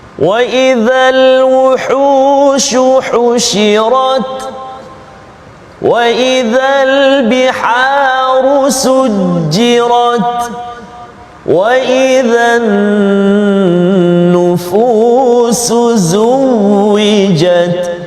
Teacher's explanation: Jadi kena hati-hati huruf ta, kena berikan hak dia sedikit, angin keluar sikit, kan? Sikit saja, jangan banyak